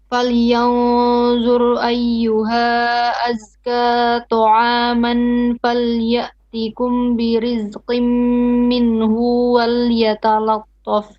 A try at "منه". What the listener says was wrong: Stop. Not minhu, short vowel. Minhu.